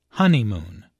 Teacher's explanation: There are 3 syllables in honeymoon, with a stress on the first syllable